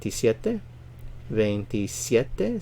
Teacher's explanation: stress on the second to the last because it ends in a vowel